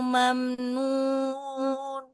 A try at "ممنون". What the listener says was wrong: Nggak boleh ke hidung. Mamnun. Masih. Mamnun.